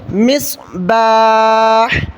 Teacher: صاد کو موٹا کریں اور ہا کو گلے سے نکالنا ہے